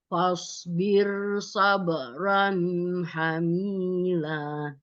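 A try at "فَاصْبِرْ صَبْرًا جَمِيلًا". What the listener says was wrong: Ini osa tadi dibaca lebih ke sin. Ini jim, bukan ha.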